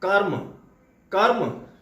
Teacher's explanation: जब हम कर्म शब्द बोलते हैं तो अगर हम रा को पूर्ण रूप में बोलेंगे तो हो जाए करम करम, लेकिन रा का हल्का सा हम स्पर्श लेते हैं